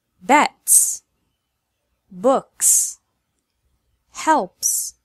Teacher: S is pronounced S whenever it follows an unvoiced sound.